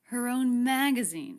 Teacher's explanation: so her and own less stressed a little flatter leading up in pitch and energy to the stressed syllable mag her own magazine and then smoothly the voice falls off